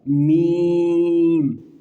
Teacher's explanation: میم دونوں ہونٹوں کے خشک حصے سے ادا ہوتا ہے، جو باہر والا حصہ ہے وہاں پر جب یہ دونوں حصے آپس میں بالکل مل جائیں گے، منہ بند ہو جائے گا، ہونٹ نظر نہیں آئیں گے تو پھر یہ حرف ادا ہوگا میم۔